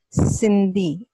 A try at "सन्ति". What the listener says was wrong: what is it si or sa or Santi? Santi.